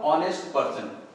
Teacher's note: the vowel sound comes freely through the throat. It is not pronounced with H. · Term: silent letter H